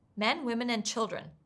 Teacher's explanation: Notice how we pronounce and as nd, a weak unstressed sound.